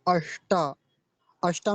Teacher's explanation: अष्टा में मूर्धन्य सकार है